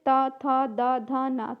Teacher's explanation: फिर आपका होता है दंत, मतलब जो दांतों को छूता है